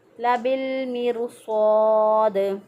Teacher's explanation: स्वाद ज़बरफ़ा, इसको भी मोटा अदा किया क्योंकि हरूफ मुस्तारिया है। स्वाद के साथ अलिफ भी मोटा हो जाएगा क्योंकि अलिफ जो है वो माक़बल के ताबे होता है